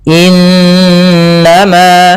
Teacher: suara n-nya ditahan dua harakat. Innama nah baru dilepas. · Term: bacaan ghunah, gunnah